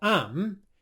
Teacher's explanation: he's pronounced the I diphthong as more of an A sound. He said what sounds a bit more like am instead of I'm.